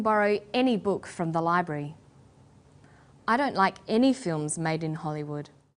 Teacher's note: when the word any is stressed this tells us that we're talking about an unrestricted quantity or unlimited choice